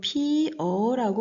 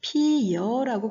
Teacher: 피여로 발음됐을 때는 어가 여로 바뀌어서 소리가 나는 거죠. 여라는 소리는 이중모음입니다. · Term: 반모음 첨가